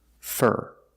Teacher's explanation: most of the time for is not stressed and for this reason it's pronounced f with a short sound R like Burger